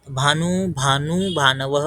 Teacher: भानू शब्दामधला हा जो भानू असतो हा दीर्घ असतो, म्हणजे ऊ ने अंत होतो